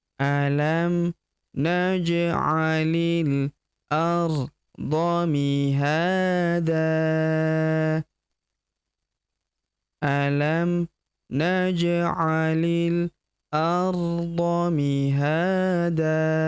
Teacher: Mihada tanwin an kita hilangkan, kita rubah menjadi fathah dan kita panjangkan dua harakat. Alifnya tidak dibaca ya.